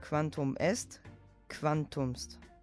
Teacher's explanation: Man spricht dagegen von einer Aphärese, wenn das zweite Wort auf es oder est endet. So wird der anlautende Vokal nicht ausgesprochen.